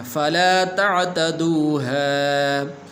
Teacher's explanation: یہاں پر عین آپ نے پڑھنا ہے، حمزہ نہیں پڑھنا، ایسے نہیں پڑھنا فَلَا تَعْتَدُوهَا، بلکہ ایسے پڑھنا فَلَا تَعْتَدُوهَا.